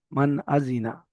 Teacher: নুন সাকিনের আওয়াজকে বিনা গুণনায় জাহির করে তাড়াতাড়ি পড়তে হবে, একে ইজহার বলে।